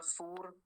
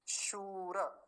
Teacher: शूर तालव्य सकार दीर्घ उकार के कारण लंबा खींचेगा थोड़ा सा · शूर, दो काम की बातें हैं इतने में, दो क्या तीन काम की बातें हैं। पहली तालव्य शकार, दूसरा दीर्घ उकार, और तीसरा है रेफ, और वो भी पूरा